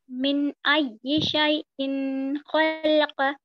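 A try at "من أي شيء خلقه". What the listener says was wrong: لام پہ جزم دے رہے ہیں آپ حرکات ہے زبر والی حرکت ہے خلق من نطفت خلقہ فقدر خلقہ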